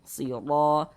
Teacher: dibaca tebal, sehingga pangkal lisan kita naik terangkat ke atas ketika kita mengucapkannya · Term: tabkhim